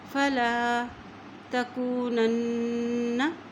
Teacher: نون کی زبر کو اس نون کے ساتھ ملاتے ہوئے پڑھیں گے کیونکہ اس نون کے اوپر شد ہے